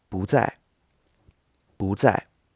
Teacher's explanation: So you'll notice that I've actually written 不 在 as 2 fourth tones, as in both of the tones are falling in pitch. But in fact, when this character 不 comes before another character which is in the 4th tone, then it changes to the 2nd tone.